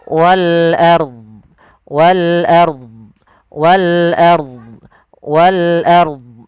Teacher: Pada lafal wal ard di sini ada alif lam, yaitu alif lam qamariyah, alif lam yang kita tuliskan dan kita baca dengan jelas suara lamnya. Ro-nya di sini ada ro tafkhim, harus dibaca dengan tebal.